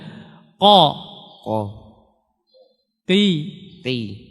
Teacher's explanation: Ada ujung, yang paling keluarin ujung, nah yang paling dalam itu namanya pangkal. Nah, kalau kita menaikkan pangkal lidah kita, meninggikan pangkal lidah kita, maka suara akan menjadi tebal. Kalau tebal kita naikkan.